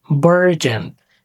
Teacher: The stress is on the first syllable. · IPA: /ˈbɜːr.dʒən/